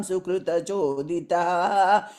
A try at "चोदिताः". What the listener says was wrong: Third line and choditaha. We added a visarga there. Yeah, because fourth line, the is will go away in the beginning. So the visarga will move to the third line.